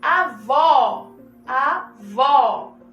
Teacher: Olha como ele fica mais intenso, como esse O fica mais aberto.